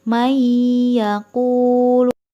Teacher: memasukkan nun mati ke huruf ya yang ada didepannya dan cara yang kedua membacanya dengan dengung maiyah tidak hanya dengan · Maka apabila terdapat nun mati atau tanwin bertemu dengan salah satu huruf dari ya, nun, mim, waw, maka dibaca dengan dengung. Dikatakan dengung karena ketika membacanya tidak bisa terlepas dari suara hidung. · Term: Idgham Bighunnah, idgham bi gunnah